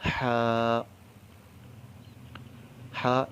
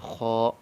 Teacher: ہا نہایت سہولت سے، نرمی سے ادا ہوتا ہے اور باریک پڑھا جاتا ہے، اور خو اس کو موٹا پڑھا جاتا ہے